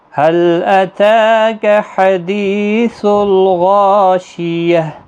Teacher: دی یا مدہ ہے، غا الف مدہ ہے، دونوں کو 1 الف کی مقدار کے برابر کھینچ کر پڑھیں گے، اور ہا ساکن پڑھا جائے گا وقف کی صورت۔